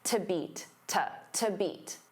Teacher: because to is a preposition it becomes unstressed.